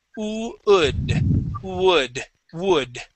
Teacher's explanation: Okay, the trick with all W words, okay, this works with every W word out there, instead of starting off or reading it as a W, think of it as an ooh sound